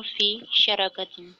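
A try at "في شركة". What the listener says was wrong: فی شریکہ راہ کے نیچے کسرہ ہے۔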